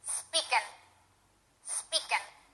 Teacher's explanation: many Spanish speakers drop the G they leave the g off at the end of the word and it ends up sounding like this speaking speaking that's wrong